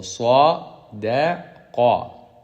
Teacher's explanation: the word sadaqa, the sad is heavy, the dal is light, and the qaf is heavy.